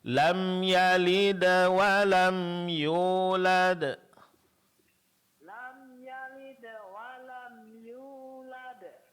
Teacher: Ini karena ini qalqalah sughra ya. Jadi pantulannya itu lembut ya. Arahkan ke fathah.